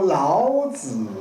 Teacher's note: 这是按照国语北京话的要求是这样读的，不能读一个轻声 。这个轻声是普通话国语里面的一个特点，南方人一般没有。台湾